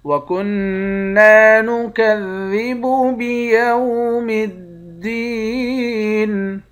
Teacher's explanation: نون مشدد پر غنہ کریں گے، نون کے بعد الف ہے، الف حروف مدہ ہے، ایک الف کی مقدار کھینچ کر پڑھتے ہیں۔ دال کو یا کے ساتھ ملا کر یا کو ایک الف کی مقدار کھینچیں گے، یا حروف مدہ ہے، آخر میں نون ساکن ہے۔